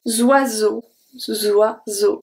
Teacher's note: E, A, U are an open O, a soft O, because there's nothing at the end